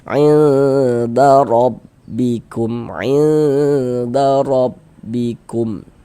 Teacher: huruf ra dibaca tafkhim, dibaca tebal, sehingga ketika kita mengucapkan itu dengan menaikkan pangkal lidah kita